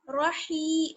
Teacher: या देखिए या मद्दा है, यानी या साकिन है और उससे पहले ज़ेर है, इसलिए थोड़ा सा खींचेंगे